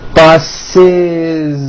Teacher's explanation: The last sound you hear is that voiced Z.